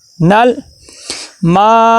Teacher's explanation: وَيَمْنَعُونَ نون کو لام کے ساتھ ملائیں گے اور لام کو دیکھنا کلکلا نہیں ہونا چاہیے بلکہ آواز رک جائے